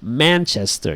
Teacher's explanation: it's pronounced Manchester you stress the man